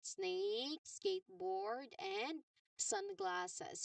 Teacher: which all starts with a letter S sound. Remember the narrow air channel and no throat vibration here.